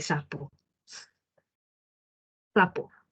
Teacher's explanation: Mi lengua jamás toca los alvéolos mientras pronuncio la S. No se tocan porque si no el aire no puede salir. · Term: fricativo